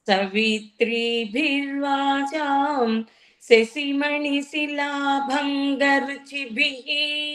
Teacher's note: విసర్గం ఉంది కాబట్టి హి అనేది స్పష్టంగా రావాలి